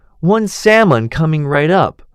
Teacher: I had never realized that the l is completely silent. I spent the rest of the meal wondering why on earth English people put an l in a word if nobody is ever going to say it.